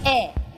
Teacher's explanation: So the e which means yes is e. It's pronounced like e sort of a flat and sort of in a falling intonation. E that means yes.